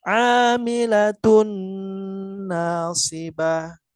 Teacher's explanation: Jadi tanwin bertemu dengan nun. Jadi langsung kita baca huruf nunnya ya. Tidak dipisah.